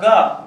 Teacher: जब ग बोलेंगे ना तो उसमें कंपन पैदा होता है